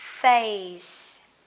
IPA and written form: feɪs (face)